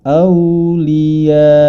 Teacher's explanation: Jadi cara membacanya, matnya kita penuhi terlebih dahulu sebagaimana semestinya. Kemudian karena di akhirnya itu ada hamzah, maka dibaca mat tersebut dan berhenti seketika. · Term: mad wajib muttasil